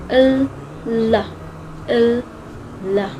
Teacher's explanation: the consonant L is an alveolar lateral approximant, which sounds like l, la, l, la.